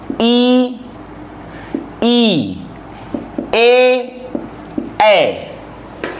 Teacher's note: ऐसे स्वर जिनका उच्चारण जिह्वा के अग्र भाग से किया जाता है उन्हें कहा जाता है अग्र स्वर। और अग्र स्वर होते हैं ई, ए।